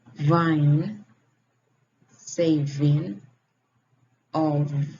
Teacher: Is voice labiodental fricative.